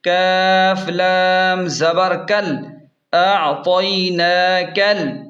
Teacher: کاف کو ڈائریکٹ لام کے ساتھ ملا کر پڑھیں گے، بیچ میں یہ الف نہیں پڑھیں گے۔ کاف لام زبر کل، اعطیناکل۔